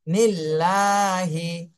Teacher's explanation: আল্লাহ শব্দের ডানে জের আসছে, এই জন্য আল্লাহ শব্দকে চিকুন করে পড়তে হবে। নিল্লাহি। হ্যাঁ, আল্লাহ শব্দের উপরে দেখেন খাড়া জবর রয়েছে, এক আলিফ টান দিতে হবে, তাহলে চিকুন করে তারপরে এক আলিফ টান দিতে হবে।